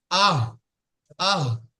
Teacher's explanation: গলার শুরু অংশ হইতে ছোট হাটি উচ্চারণ হয়